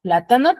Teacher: plátano tiene la mayor fuerza de voz en la antepenúltima sílaba